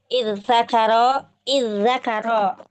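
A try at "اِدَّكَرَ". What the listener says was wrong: Dilebur dengan dal. Idda. Dal. Iddal. Idzakara.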